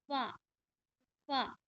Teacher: ऊपर के दांतों को निचले के होठ से जब मिलाएंगे तो फा अदा होगा